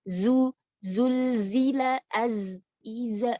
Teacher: Jika itu huruf Zay, maka itu memiliki karakteristik jahr, jelas bukan hams. Jadi, jika Anda menghilangkan karakteristik jahr, maka huruf tersebut akan menjadi persis seperti huruf Sin, karena karakteristiknya sama, satu-satunya perbedaan adalah hams dan jahr.